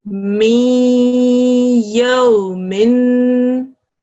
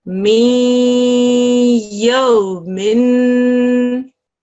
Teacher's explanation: when a ya mushaddad here appears after a noon sakin, assimilation will take place with a 2-second nasal sound